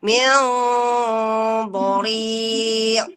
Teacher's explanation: Nun sukun bertemu dengan dha itu ada hukum namanya ikhfa. Jadi kita tahan dulu ya. · Nah, jangan lupa dha-nya hurufnya tebal ya. Jadi kita dha kan vokalnya O, jadi juga ikhfanya tebal ya.